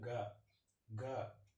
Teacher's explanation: இது சொல்லும் போது காற்று கம்மியாக வரும். ஸோ இது அல்ப பிராணில் வரும்.